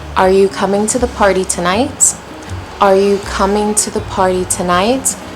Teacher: Starting off low and then climbing up that hill. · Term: rising